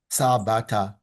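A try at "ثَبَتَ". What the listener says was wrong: So that's not sa, but tha.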